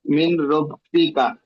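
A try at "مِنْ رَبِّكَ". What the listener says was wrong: মিন নয়, মির রব্বিকা, নুনটা উচ্চারণ হবে না, এই নুনটা উচ্চারণ হবে না, র উচ্চারণ হবে। মির রব্বিকা, জি।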